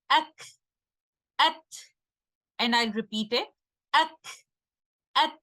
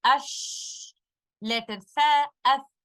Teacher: while saying letter kaf and letter ta, it was more like a shot of breath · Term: shidda